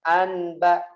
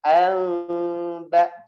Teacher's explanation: Salah satu contohnya nun ketemu dengan huruf ba contohnya. Jadi nun ketemu ba, bacanya bukan anba tapi amba, dirapetin mulutnya atau diberikan rongga sedikit. Amba, seperti itu.